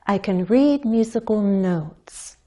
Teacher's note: with a word like notes there's only one syllable so we can't step down our voice has to glide or slide downward the syllable is long enough for us to change that pitch